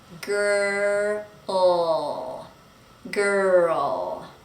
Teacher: the tongue does not touch anything when we make the R in English. It's just hanging out there in the mouth, but it's not touching the top of the mouth.